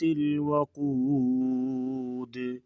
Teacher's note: آگے النار، النار سے شروع کریں گے، یہ الف ہے، الف کے اوپر جو ہے وہ حرکت لگے گی، زبر کو لگا کے آگے نون کے ساتھ ملائیں گے، النار ذات الوقود، قاف کو موٹا کریں گے اور دال ساکن ہوگی، قلقلہ ہوگا